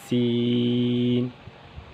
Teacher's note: اس کا مخرج بھی وہی ہے جو زا کا مخرج ہے، اس کی ادائیگی کی جگہ بھی وہی ہے جو زا کی ادائیگی کی جگہ ہے، سین۔ زبان کی نوک اور اوپر نیچے کے دانت جب آپس میں ملیں اس سے سین ادا ہوگا